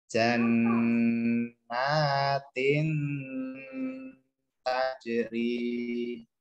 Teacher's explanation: Cara membacanya adalah dengung juga ya, dengungnya tapi samar-samar. Samarnya maksudnya adalah cara mendengungnya ini dia masuk ke langsung kita siap-siap masuk ke huruf sebelumnya. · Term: ikhfa hakiki